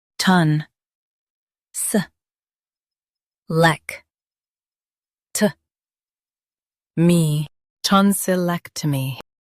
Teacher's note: Focus on leck and soften ton and mee.